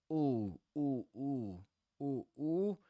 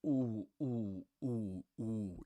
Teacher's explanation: pronouncing that first vowel sound, that ooh, with your lips fully rounded